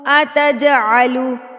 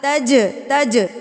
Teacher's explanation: جیم کو ہلا کے پڑھیں گے کیونکہ یہ سکون کی حالت میں ہے. تو قاف طا با جیم دال جب سکون کی حالت میں آ جاتے ہیں تو ان پر قلقلہ کیا جاتا ہے، ان کو ہلا کے پڑھا جاتا ہے.